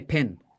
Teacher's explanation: in many places the word pin and Pen are said the same way